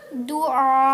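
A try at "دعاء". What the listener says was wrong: नहीं, आखिर से यार अलग से झटका नहीं देना, आ को ही लंबा करके हमज़ा से झटका देना है। हाँ जी, आइन की साउंड को ही हमज़ा की साउंड में मिक्स करके झटका देना। दुआ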